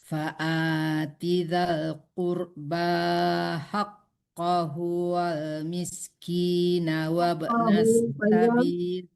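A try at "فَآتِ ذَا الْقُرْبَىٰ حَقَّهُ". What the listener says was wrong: Haqqahu-nya panjang hu-nya duluan dong.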